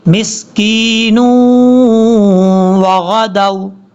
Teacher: یہ پھر ادغام یرملون کا غنہ ہوگا. یہاں پر 2 سیکنڈ کے قریب غنہ کریں گے